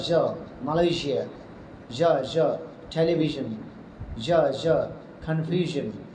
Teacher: জিহ্বার আগা তালুর সাথে না লাগিয়ে হালকা ফাক রেখে উচ্চারিত হয়